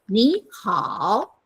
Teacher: so two third tones, the first one becomes second tone.